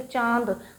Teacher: जो हवा है आपके मुंह के साथ आपकी नाक से भी निकल रही है इसको कहा जाता है अनुनासिक